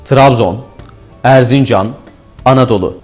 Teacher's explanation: Bu yer adlarında vurgu genellikle orta hecelere kaymıştır.